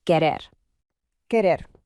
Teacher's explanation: Notice the slightly rolled R sound right in the middle